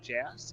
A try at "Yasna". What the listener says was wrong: It's a Y instead of a J. It's a Y sound instead of a J. So it's Yasna.